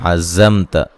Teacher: ذا کو سختی سے سیٹی سے پڑھیں گے